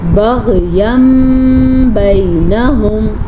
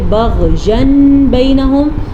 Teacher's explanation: دونوں صورتوں میں نون ساکن بھی میم میں بدل جائے گا اور نون تنوین بھی میم میں بدل جائے گا · ہم یہاں پہ نون تنوین کے بعد بجائے میم پڑھیں گے اور غنے کے ساتھ پڑھیں گے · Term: اقلاب کا قاعدہ